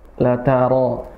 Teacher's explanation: Ra-nya tuh tebal ya